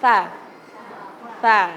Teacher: Lidahnya digigit sama gigi atas sama bawah.